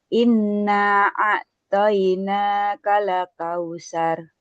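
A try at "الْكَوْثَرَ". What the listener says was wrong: Diusahakan di setiap huruf lam yang sukun tidak terpental-pental. Kal enggak ditahan.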